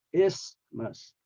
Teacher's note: Actually, it's not the TH, because the TH is silent. So the middle sound is the S sound